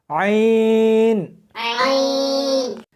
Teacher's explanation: اس کو حلق میں سے سختی کے ساتھ نکالنا ہے۔ عین ملا کر پڑھیں۔